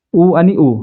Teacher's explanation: उ चा उच्चार करताना आपले ओठ काय करतात एकमेकांना किंचित चिकटतात म्हणून त्यांना काय म्हणायचं औष्ठ स्वर म्हणायचं ठीक आहे म्हणजे आपलं